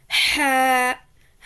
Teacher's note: حلق کے درمیانی حصے سے ح ادا ہوتا ہے